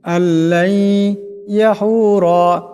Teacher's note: এই নুন সাকিনের উপরে ইয়া আসছে, এখানে ইদগাম হয়ে যাবে, ইদগামের এক আলিফ পরিমাণ গুণনা হবে।